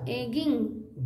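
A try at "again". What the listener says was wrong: घी क्यों बोल रही है एन ग में एन लगाइए अरे ग में एन लगाइए आग अ अ अगेन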